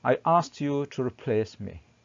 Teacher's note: we pronounce the ed as t